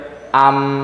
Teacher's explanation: mendekatnya posisi mulut pada makhraj huruf yang sukun kalau mim berarti dua bibir mendekat keduanya